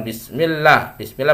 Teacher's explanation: bismillah dibaca tipis tarqik karena sebelum nya harakat kasrah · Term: tipis tarqiq